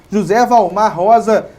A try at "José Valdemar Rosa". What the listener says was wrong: Valdemar, faltou um D. faltou um D, né?